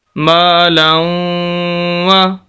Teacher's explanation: واو مشدد ہے، شد والا، یہاں پر غنہ کریں گے